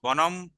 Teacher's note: অবশ্যই ম উচ্চারণ, মানে অনুস্বার উচ্চারণ করা যাবে না, সবসময় ম উচ্চারণ করতে হবে